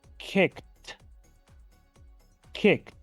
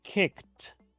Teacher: Fíjense que estoy pronunciando la terminación ED como la letra T.